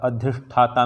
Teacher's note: मूर्धन्य स, जीभ को मूर्धा तक पीछे मुड़ो